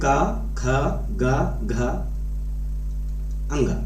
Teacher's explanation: वे वर्ण जिन्हें उच्चारित करते समय या बोलते समय कंठ व जिह्वा स्पर्श करें, उसे हम कंठ वर्ण कहते हैं